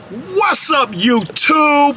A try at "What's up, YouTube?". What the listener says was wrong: You gotta drag that too.